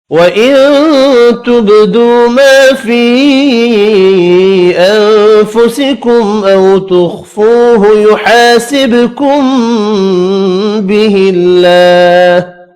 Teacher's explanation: نون کا اخفا ہوگا، با ساکن پر قلقلہ کریں گے۔ واو مدہ، الف مدہ ایک ایک الف کی مقدار میں کھینچ کر پڑھے جائیں گے۔